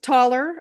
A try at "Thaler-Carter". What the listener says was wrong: I'm sorry, Rita, it's Taller-Carter. Taller dash Carter. No, you pronounced the taller right, but it's Taller dash Carter.